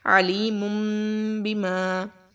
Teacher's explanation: تو جب اقلاب کا قاعدہ اپلائی ہوگا تو نون ساکن کی آواز کو ہم میم سے بدل دیں گے · تو یہ تھا ہمارے پاس اقلاب کا قاعدہ کہ اگر ہمارے پاس نون ساکن یا تنوین کے بعد با آ جائے گی تو ہم وہاں پر آواز کو بدل دیں گے، ٹھیک ہے. نون ساکن اور تنوین کی آواز کو میم کے ساتھ بدل دیں گے اور وہاں پر چھوٹا سا میم پہلے سے ہی لکھا ہوا ہے.